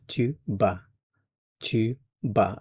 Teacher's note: So for the je form, it's ba, and we're not pronouncing the T or the S.